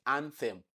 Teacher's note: So the sound you have there is a dental sound. It is not an alveolar sound.